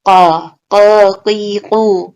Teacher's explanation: Qaf itu tebal, makhrajnya di ujung tenggorokan.